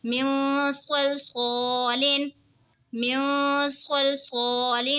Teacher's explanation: نون ساکن کے بعد حروف اخفا کا صاد آ رہا ہے تو اخفا ہوگا یعنی غنہ کر کے پڑھیں گے